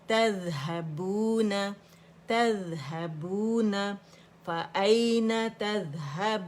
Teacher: ذال باریک ہے، اس کا رخاوہ ہے، فلو جو ہے آواز کا ذال کے اندر ہونا چاہیے